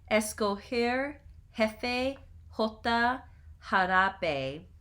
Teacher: So before E and I, the Spanish G has the same sound as the Spanish J, a strongly aspirated English H